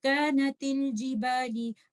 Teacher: آپ تا کو لام کے ساتھ جوڑ دیں گے اور آپ حمزۃ الوصل پہ کوئی فتحہ دمہ یا کسرات نہیں ڈالیں گے